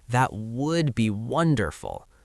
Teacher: The stress goes on wonderful.